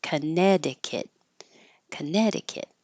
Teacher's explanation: you put your tongue up to hold it in the K position to stop the air but you don't hear a c so you also don't hear anything here contic not connect Conneticut